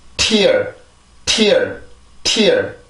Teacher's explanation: 치조 폐쇄음인데 혀를 이용해서 치조를 완전하게 막아주고 나서 그 강한 공기를 만들기 위해서 혀의 힘을 더 줘요.